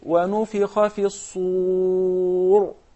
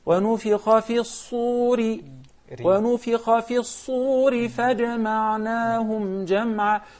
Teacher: the ra, sometimes it becomes heavy when we start, and very thin, مُرَقَّقَة, when he continued because of the effects of the kasra.